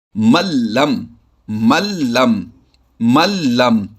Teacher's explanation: नून साकिन के बाद अगर हरफ लाम और रा आ जाए तो इदगाम होता है, लेकिन बिला गुन्ना के होता है, जैसे मल्लम, मल्लम, मल्लम। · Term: इदगाम बिला गुन्ना